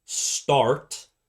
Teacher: So T is aspirated, but if you put another sound in front of it, like start, then the sound is not aspirated anymore